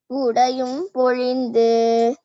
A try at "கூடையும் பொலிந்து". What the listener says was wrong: it's not பொழிந்து பொலிந்து தோன்றிய தோள்